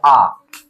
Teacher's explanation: जीभ के पिछला हिस्सा से जिसका उच्चारण होगा उसको कौन सा स्वर बोलेंगे हम लोग, पश्च स्वर बोलेंगे